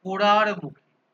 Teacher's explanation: এই শব্দটিতে মাঝে একটি র ধ্বনির আগমন ঘটেছে, মাঝে ঘটেছে, সেই জন্য এটাকে মধ্য ব্যঞ্জনগম বলা হচ্ছে।